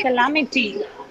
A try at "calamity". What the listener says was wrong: Now you pronounce it with the proper stress. Calamity. Yeah, calamity. Don't say can.